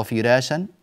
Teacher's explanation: في كلمة فراشا عندنا ترقيق الراء، وذلك لأن الراء هنا مفتوحة وجاء قبلها حرف مكسور